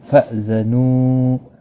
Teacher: نو واو مدہ ہے، 1 الف کی مقدار کے برابر کھینچ کر پڑھیں گے